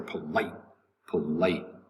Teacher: the t disappears somewhat into the mouth